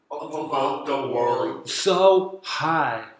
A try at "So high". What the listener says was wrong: 예, high에서 H에서요. 하가 들어가야 됩니다.